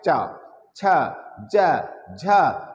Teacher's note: हमारे जीवा और जो तालु होती हैं आपस में चिपक जाती हैं, तो रगड़ उत्पन्न होता है, तो इसलिए इसको हम कहते हैं स्पर्श संघर्षी व्यंजन।